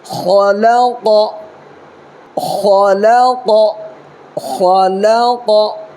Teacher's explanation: دیکھیں آگے چلیے، خا زبر خا، خا کو تھوڑا پر کرنا ہے، لام زبر لا، قاف زبر قا، یہ بڑی قاف ہے اس کے اندر قلقلہ ہوگا